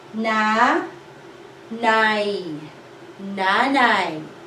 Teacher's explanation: we have a diphthong in the second syllable